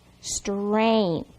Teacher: the tricky part is you don't hear the G